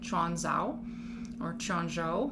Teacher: I have heard that you pronounce Q's with that ch sound instead